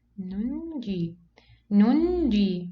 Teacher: So we pronounce it as if there is two nuns. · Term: small noon